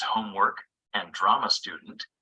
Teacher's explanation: the main stress is on the first word the first word is longer stronger and higher in Pitch than the second word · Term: stress in noun compounds